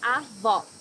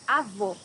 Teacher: Here you need to hear the sound of the last O in the syllable. It should be an open O as we say in Portuguese.